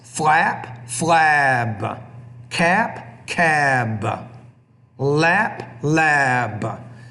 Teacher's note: the P, a voiceless consonant, typically makes the vowel which precedes it shorter. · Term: duration of the vowels